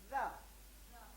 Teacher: اور زا میں زا زبان کی نوک اوپر والے دو دانتوں کے سرے سے لگتی ہے